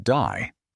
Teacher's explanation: in the Australian accent, they might say a word like day, so that it sounds a little more like dye.